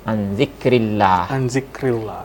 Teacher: ketika sebelum lafaz Allah itu ada huruf yang berbaris kasrah, itu tidak boleh ditebalkan ya, atau ditafkhimkan huruf lamnya itu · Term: lafaz jalalah